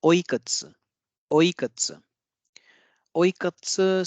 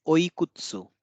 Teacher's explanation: if there is u or e in between two unvoiced consonants, then the vowel gets devoiced. So here it won't be oikutsu, it will be oikats. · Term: devoicing of vowels